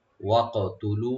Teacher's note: ওয়াকতুলুহুম ওয়া ওপেন রেখে কাফটাকে একটু কলকলা করতে হবে, ইকু করতে হবে